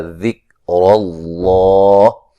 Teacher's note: فان، نون ساکن کا باریک اخفا ہوگا، سا باریک سیٹی سے مد اصلی ہے، یہاں میم ساکن کا اظہار ہے. ذکر اللہ، لفظ اللہ کو موٹا ادا کریں گے، اس سے پہلے حرف پر زبر ہے اور را کو بھی موٹا پڑھیں گے.